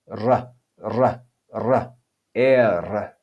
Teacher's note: We then have er, er, and you should be able to hear that trilled sound like in Spanish